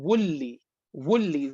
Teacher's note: Noon is totally gone. Neither it is present in the word, nor it is present in the sifa.